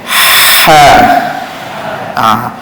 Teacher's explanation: Dia tak berapa ada angin sangat, bahal kita dah keluarkan angin yang kuat, tapi kerana tekanan itu berlaku di tekanan yang agak lemah berlaku di tengah kerongkong, maka hasil anginnya itu agak sederhana ataupun lemah. Dia sifatnya hamas juga, berangin juga, tapi agak lemah anginnya kerana berlaku tekanan pada tengah kerongkong. Tekanan pun tekanan yang lemah juga.